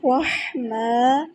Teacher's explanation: را یہاں پہ موٹا ادا کرنا ہے، ہا وسطی حلق سے ادا کرنا ہے، باہر کی طرف سانس نکالیں گے تو بہت پیارا ہا ادا ہوگا